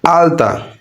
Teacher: এই আলতা শব্দের ল আসছে দন্ত থেকে